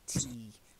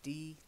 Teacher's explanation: Remember T, lots of air coming from your teeth, and D, not so much air. D, T. D is a little bit further back on the palate as well.